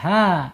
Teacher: Tiba-tiba disukunkan karena ada waqaf berhenti gitu. Kemudian h-nya tidak hidup ya harus lari ke makhraj bawah tenggorokan